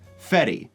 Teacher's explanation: she has an alveolar tap R